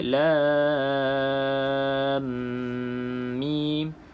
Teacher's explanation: masukkan ke dalam mim dengan dengung 2 harakat